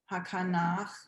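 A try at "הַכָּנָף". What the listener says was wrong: That's a final fe. Hakanaf. Hakanaf.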